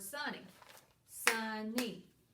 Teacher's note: I hear a vowel sound at that first syllable, sunny. And then I hear the second vowel, that Y making that long E sound in that second syllable.